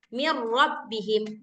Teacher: kalau misalkan idgham suara nun sukunnya itu udah hilang.